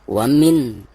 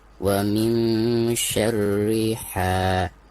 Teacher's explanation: cara membaca nun sukun di sini itu harus disamarkan ya, tidak boleh dijelaskan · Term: ikhfa